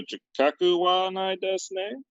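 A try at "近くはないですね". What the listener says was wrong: Your intonation was very strange, but you got it right. Chikaku wa nai desu ne. Chikaku wa nai desu ne.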